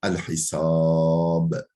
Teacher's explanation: El-Hisab aslında el-Hisabidir ama dururken el-Hisab denir.